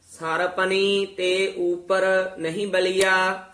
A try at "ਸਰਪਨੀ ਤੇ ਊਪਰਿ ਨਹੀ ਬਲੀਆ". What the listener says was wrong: ਸਰਪਨੀ ਰਾਰਾ ਪੂਰਾ ਹੀ ਬੋਲਣਾ ਹੈ। ਸਰਪਨੀ ਤੇ ਉੱਪਰ ਨਹੀਂ ਬਲਿਆ।